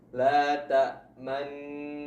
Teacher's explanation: Jika kita baca dengan cara pertama, yaitu dengan ishmam, maka membacanya dengan memonyongkan bibir, seakan-akan kita membaca nun dhammah secara isyarat